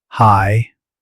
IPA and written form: haɪ (High)